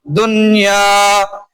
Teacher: اظہار مطلق ہوگا، یعنی بغیر گنہ کے پڑھیں گے اور اس قدر پڑھیں گے، دال نون پیش دن یا الف زبر یا، دنیا۔